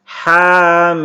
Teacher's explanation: Huruf H dibaca panjang 2 harokat saja, kemudian mimnya 6 harokat.